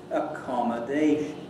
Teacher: the main stress is on the dation bit, and the secondary or subsidiary stress is on the second syllable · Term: secondary stress